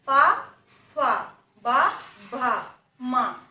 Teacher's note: Every time our lips will be touching when we are spelling the pa वर्ग.